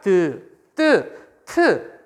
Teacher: 혀끝과 윗잇몸 사이에서 나는 소리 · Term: 잇몸 소리